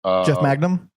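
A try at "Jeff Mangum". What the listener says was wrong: I think it's pronounced Magum. It's not pronounced like Magna. It's Mangum.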